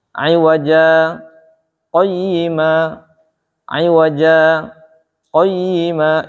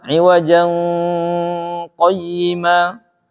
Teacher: Tetap dibacanya iwaja, tapi kita nggak nafas, kemudian lanjut. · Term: saktah